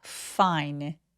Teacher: F는 윗니가 아랫입술 바로 뒤쪽에 가볍게 닿아서 바람 소리가 확실하게 느껴지게 해주시는 게 포인트예요. fine, fine, fine 아니고 fine 이렇게요.